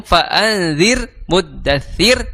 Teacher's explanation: maka dihukumi r-nya adalah ro tarqiq ya karena ro-nya tipis ya r-nya tipis ya Kenapa r-nya tipis ya salah satu sebabnya karena huruf sebelum